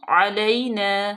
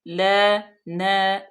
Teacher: अस्सलामु, लाम अलिफ मद्दा, मीम मजमूम है, अलैना आइन का मखरज वाज़ह करें, यालीन और उसके बाद फिर अलिफ मद्दा, न लंबा हमने इसको दो हरकत के बराबर लंबा करना है। अस्सलामु अलैना, ल न, देखें कि सेम लंबा किया अलिफ मद्दा को।